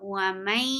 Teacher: And it is with gunna. وَمَيْ, you are keeping the sound in your nose